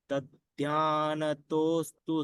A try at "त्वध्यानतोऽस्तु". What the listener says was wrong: सिर्फ यहाँ पर शंभवाख्य में शकार का उच्चारण थोड़ा स्पष्ट चाहिए और त्वध्यान है, तध्यान नहीं है यहाँ पर, त्वध्यान है। तो वो दो चीजें आप जरा ध्यान करके उच्चारण कीजिएगा।